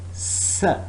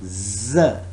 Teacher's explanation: The next is S. It's voiceless. Z. It is voiced.